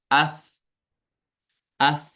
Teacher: ایک تو ہوا نکلتی ہے اور اسی کی وجہ سے جو ہے نا آواز پست ہو جاتی ہے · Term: صفت ہمس